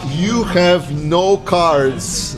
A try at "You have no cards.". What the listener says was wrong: You have no cards. You say it with a different tone, you know. It's like you have no cards. You have no cards.